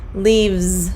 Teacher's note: the V it changes that's a voiced V voiced sound so when we add the S it's going to sound like a z